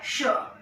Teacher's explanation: इस श को बोलने के लिए हमें अपनी जीभ को अपने ऊपर के तालू तक ले जाना पड़ता है